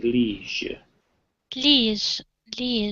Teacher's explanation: the G here is voiced, so there is a bit of a vibration when we say liege